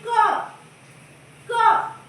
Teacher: आवाज हमारी कंठ से निकल रही है, इसीलिए कंठ से उच्चारण होता है का